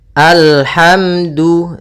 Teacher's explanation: da hukumnya makhrajnya pada ujung lidah menempel dengan di antara gusi dengan gigi atas